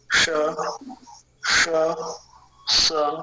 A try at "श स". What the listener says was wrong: दूसरा वाला भी आपका लगभग वहीं से हो गया, ऐसा लग रहा है जहाँ से पहला हुआ था। हाँ, श में जी एकदम ऊपर जाएगी, यहाँ से ट है, ट श।